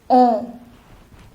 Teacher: o plus n is o it is a nasal sound